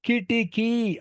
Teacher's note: మొదటిది హ్రస్వం కి, రెండవది హ్రస్వం కిటి, మూడవది దీర్ఘం కిటికీ. కానీ మనం పెద్దవాళ్ళే మాట్లాడి కిటికీ కిటికీ 3 హ్రస్వాలుగా పలికేస్తున్నాం.